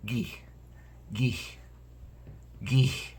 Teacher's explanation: I have a little bit more of a breathy sound on the end of